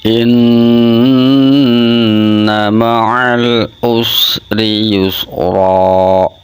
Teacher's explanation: Ghunah itu dengung, musadadah den banget dengunge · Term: ghunah musadadah